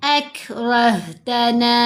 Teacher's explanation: कैफ और हा दोनों साकिन हैं, दोनों हरूफ हम्स में से हैं